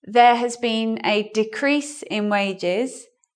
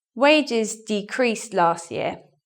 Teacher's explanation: Decreased is in the verb position, so we swap; we stress the second syllable.